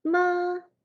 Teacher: Do would be the highest tone, first tone.